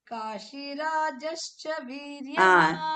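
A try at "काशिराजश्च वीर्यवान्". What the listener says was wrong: It is Kashirajascha Viryavan, but you are saying Kashirajascha. You are making it dirgha. Kashirajascha Viryavan.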